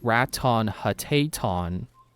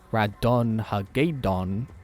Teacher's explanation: it sounds like the T sounds are D